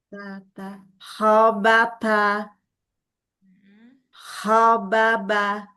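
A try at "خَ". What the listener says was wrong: Kok-nya coba buletin lagi. Kho. Kayak orang bengong. Kalau orang Jawa tuh kayak bunyinya O-nya itu O, O, ho, no, co, ro, ho gitu.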